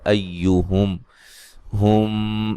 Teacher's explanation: ہم یہاں میم ساکن کا اخفا ہے